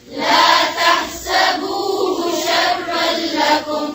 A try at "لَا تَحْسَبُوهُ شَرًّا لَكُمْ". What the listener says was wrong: बा के बाद जो वाव आ रही है इसको और वाज़ेह करें.